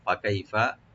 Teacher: ফা ওপেন রাখবেন, কাই এখানে হরফে লিন